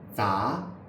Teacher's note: The teeth lightly touch. The tongue tip is down, and you can see a lot of the tongue through the teeth.